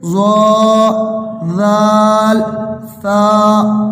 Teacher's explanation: زبان کا سرا، اوپر کے جو دانت ہیں اس کے جو اندر والا حصہ ہے اس سے مل کر یہ 3 ورڈز ادا ہوتے ہیں